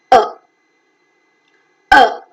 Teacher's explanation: the central part of the tongue is raised to a position which is just below the half open the lips are neutral